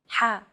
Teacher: sound is pronounced very deep in the throat you want to make an H sound but with the throat constricted a little